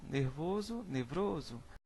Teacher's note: Na letra B, nós temos aqui hipértese, é o nome dado à transposição de um fonema de uma sílaba para outra